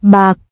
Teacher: the k sound is unreleased